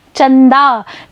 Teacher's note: जब आप चंदा बोलेंगे तो आप पाएंगे कि अनुस्वार की ध्वनि नाक से निकल रही है